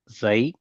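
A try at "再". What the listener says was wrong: தை அல்ல, ஜை. ஜ ஜை.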